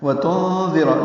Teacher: نون ساکن کے بعد دال آنے کی وجہ سے اخفا ہے